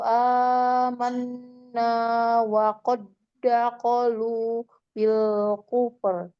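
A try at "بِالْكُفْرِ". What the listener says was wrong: Ini harus diperbaiki lamnya. Bil Ayo. Di dalam dan melebar. Bil kufur.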